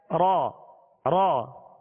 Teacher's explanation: اس میں مشابہت تکرار ہے، ہلکی سی کپ کپاہٹ جسے رعشہ کہتے ہیں ، ہلکی سی کپ کپاہٹ